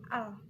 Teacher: pembentukan dilakukan dengan ujung lidah menempel pada gigi atas atau langit-langit mulut sementara udara mengalir melalui sisi lidah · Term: konsonan lateral